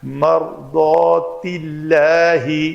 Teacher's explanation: یہ لام پتلی پڑھی جائے گی